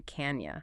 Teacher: The N from can is already getting ready for the Y sound in you. The N connects right to the Y.